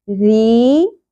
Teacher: یہاں پر آپ دیکھ رہے ہیں زیر کے بعد آگے یا ساکن آپ کو نظر آ رہی ہے تو یہ یا مدہ ہے. یہاں پر آپ کو ری کی ساؤنڈ کو ایک الف کے برابر کھینچنا ہے